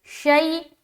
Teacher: حمزہ زبر شی، یہاں پر بھی یا لین ہو رہا ہے، یا ساکین اس سے پہلے زبر ہے لہٰذا جلد اور نرمی کے ساتھ ادا کریں گے